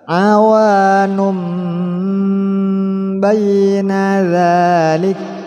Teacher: Awanum fathah ada alif, satu alif. Awanun memasukkan suara tanwin pada ba.